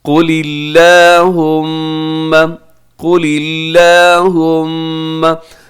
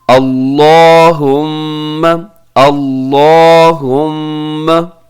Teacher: अल्लाह के लाम से पहले जो है ज़ेर है लाम के नीचे, तो हम इसको बारीक पढ़ेंगे